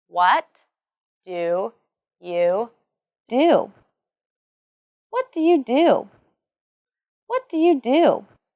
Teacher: And then, of course, there is the falling intonation and the emphasis on what and do in the sentence